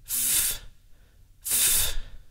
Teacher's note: it is a voiceless consonant. And that means the vocal cords do not vibrate. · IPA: [f]